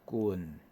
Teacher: 相对来讲呢，伊的声调较低，所以差不多2/1，伊是一个▁low▁falling▁低降调啦